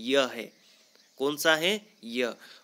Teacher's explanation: तालु से उच्चारित होने वाला जो अंतस्थ वर्ण है वह कौन सा है दोस्तों? य है।